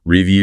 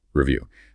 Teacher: listen carefully to the stress. It's on the second syllable.